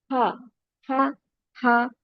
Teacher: Ha sound comes from the bottom of the throat, which is nearest to the chest, deepest part of the throat.